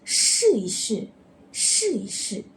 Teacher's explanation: neutral tone is said when E is sandwiched between two identical verbs. To show an action, it becomes soft and neutral.